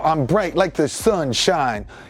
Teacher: I'm emphasizing very hard and I'm splitting it into two different syllables so it's sunshine